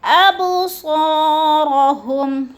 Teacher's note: با حروف قلقلہ میں سے ہے اور ساکن ہے تو اس کو ہلا کے پڑھنا ہے